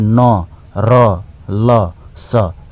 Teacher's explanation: न र ल स सबै जिब्रो र दाँतको फेदको संयोजनबाट उच्चारण हुन्छ।